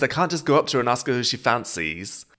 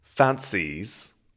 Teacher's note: the stress or the emphasis is very much on the final syllable of fancies